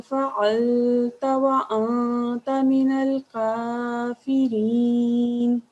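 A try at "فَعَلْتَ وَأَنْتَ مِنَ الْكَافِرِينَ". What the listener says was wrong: ये जो आपने फ़अल्ता, यहाँ लाम पर साकिन की आवाज़ ठहरा नहीं था, फ़अल्ता बाकी माशाल्लाह ठीक है। फ़अल्ता व अंता।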